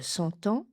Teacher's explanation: comme la guerre de 100 ans, on fait la liaison T